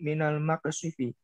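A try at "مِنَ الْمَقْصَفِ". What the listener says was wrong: Benar itu minal maqsati, fathah soknya.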